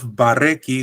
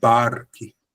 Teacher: It means that we just make the r sound, but we don't emphasize by putting a vocal or a vowel. So instead of bareki, we have barki. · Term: shva